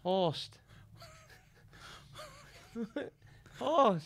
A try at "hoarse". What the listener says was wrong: Horse. Don't put a T on the end. A D. No, it's Isn't not horsed. Horse.